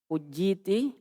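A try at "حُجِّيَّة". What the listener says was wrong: Tasdid ya-nya. Itu sebelum tak marbuto, tidak mungkin disukun. Tidak akan pernah itu. Tak marbuto sebelumnya disukun. Pasti di fathah.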